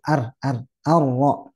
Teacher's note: jadi getarnya Sebenarnya ada tapi tidak banyak ya cuma satu